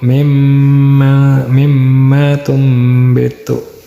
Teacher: si nunnya jadi ke mim ya, berubah jadi mim penyebutannya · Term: iqlab